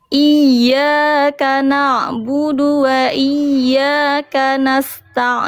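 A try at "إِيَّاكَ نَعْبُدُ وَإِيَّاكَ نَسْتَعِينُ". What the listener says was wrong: bagus lanjut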